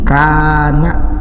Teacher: Yang ketiganya ya sukun sebelumnya kasrah, alladzina, dua ketukan, disebut mad asli. Mad asli itu pokoknya memanjangkan bacaan itulah dua ketukan.